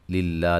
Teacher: لفظ اللہ کے لام کو باریک پڑھیں گے، اس سے پہلے زیر ہے، ذی مدہ ہے۔